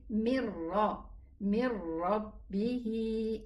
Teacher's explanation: It's idgham, and this is why we have a shadda on the ra, but the idgham is without a ghunna. It's a complete idgham, but it's without a ghunna.